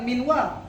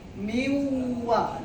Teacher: Jadi bacanya bukan minwa, tetapi dibaca miwa, langsung masuk ke huruf wa